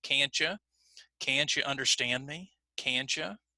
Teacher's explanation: when we put the T and the Y together, it often will sound like the ch sound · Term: assimilation